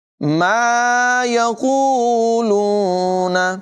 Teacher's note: क़ाफ की आवाज़ पुर होगी